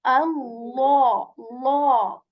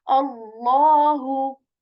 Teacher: We keep the lam heavy and say Allah, Allah. We make the lam sound heavy and say Allahu.